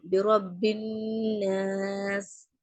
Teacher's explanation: இப்போ இங்க நூனுக்கு ஷத்தா இருக்கு. அப்போ நம்ம என்ன பண்ணணும்? நோஸ்ல என்ன பண்ணணும்? நோஸ்ல குன்னா கொடுத்து நம்ம ஓதணும். பிரப்பின்னாஸ்.